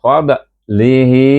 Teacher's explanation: dibaca dengan mad silah qasirah dua harakat